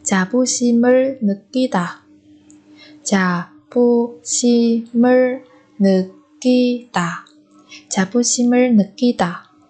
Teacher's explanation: Ở đây 심 và 을 nối âm đọc thành 심을. 자부심을 느끼다. Ở đây 느 chúng ta cũng có thể biến âm thành 느 느끼다, bởi vì phía trước của cái 니은 này là 받침 riêng.